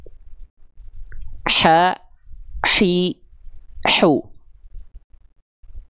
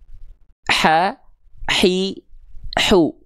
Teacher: Huruf ha kecil bersamaan dengan ain dilafalkan dari bagian tengah tenggorokan. Dia memiliki sifat mengalir nafas dengan karakteristik berbisik.